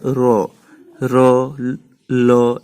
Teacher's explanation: করতে গেলে তরল যেমন আমাদের অল্প ফাঁক থাকলে বেরিয়ে যায় তেমনি এই ধ্বনিগুলো উচ্চারণ করতে গেলে আমাদের জীবার দু সাইড দিয়ে বাতাস নির্গত হয় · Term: তরল ব্যঞ্জন